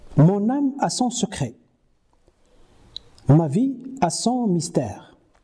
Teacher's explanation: Mais la différence entre les deux classes de rimes persiste également dans la prononciation courante qui supprime le E caduc de la syllabe finale. C'est ce que nous avons appelé apocope.